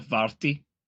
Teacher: It's strictly speaking, like if you were to pronounce it the way that it wants to be sound, it would be the TH that almost becomes a D